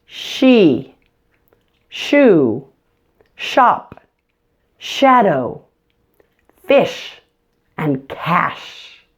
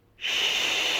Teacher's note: the SH is voiceless meaning that only air is passing through your mouth you don't use your voice at all for this one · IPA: /ʃ/